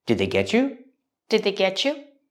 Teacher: I can link the T and the Y the T and get and the Y and U and make the sound chch like chicken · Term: chch sound